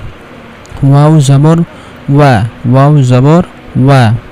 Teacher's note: ওয়াও উচ্চারণের সময় দুই ঠোঁট গোল করে উচ্চারণ করতে হবে। দুই ঠোঁট গোল করে উচ্চারণ না করলে ওয়াওয়ের হক আদায় হবে না।